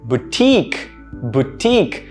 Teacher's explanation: notice that there are two syllables the syllable stress is still on the second one but the first syllable is pronounced boo instead of bow right